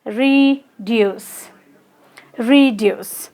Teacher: We pronounced it as reduce because it has also two syllables, and deuce. Yes, so the stress falls on deuce.